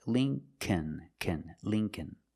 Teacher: The second L is silent, so it's Lincoln, Lincoln.